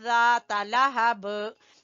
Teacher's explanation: अगर हम यहाँ पर वक्फ कर लेते हैं, हम पढ़ लेते हैं ज़ाता लहब, जो है गुन्ना नहीं होना।